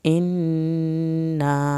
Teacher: نون کی شد پہ دیر لگائیں، اور انا الف کے ساتھ مد بھی ہے، چھوٹی مد، اس کو بھی تھوڑا کھینچنا ہے۔